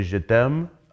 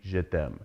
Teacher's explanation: It has to do with how the words are linked to each other, and one big rule of it is like in French, at the end of a lot of words, there's typically a schwa on the end, an e that's just an sound. In conversational French, they will drop that schwa.